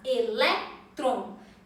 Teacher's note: Tem a penúltima sílaba mais forte. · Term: palavra paroxítona